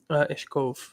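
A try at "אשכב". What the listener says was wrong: Ooh, it's not an O. Not Eshkov. Ishkav. It's like Yilmad. Yilmad Ishkav.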